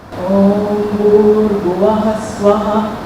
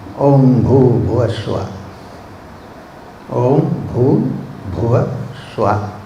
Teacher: Keep the R sound silent in the first line.